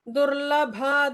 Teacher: Durlabha with a bha Mahaprana